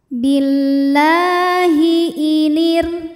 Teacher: Hukum tajwidnya adalah mad tabi'i muqaddar. sebab lam berharokat fathah berdiri. Cara membacanya, lam dipanjangkan 2 harokat. · Huruf ro sukun dibaca secara tarqiq karena harokat huruf sebelumnya kasrah, maka ro dibaca secara tipis.